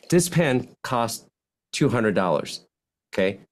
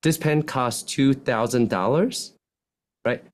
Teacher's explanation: Also known as upspeak, uptalk, and it means you're ending your sentences like this. At the end of your sentences, you're talking up. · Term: rising terminal intonation